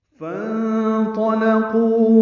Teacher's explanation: یہاں پہ فا اور انطلقوا کا بھی حمزہ عارضی ہے تو فا کو نون سے ملا دیا گیا. نون ساکن کے بعد طا آنے کی وجہ سے اخفا ہے